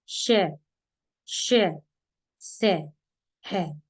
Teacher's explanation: इन व्यंजनों के उच्चारण में हवा तेज गति से मुंह के भागों से रगड़ खाती हुई बाहर निकलती है, जिससे ऊष्मा पैदा होती है, इसलिए इन्हें ऊष्म व्यंजन कहते हैं।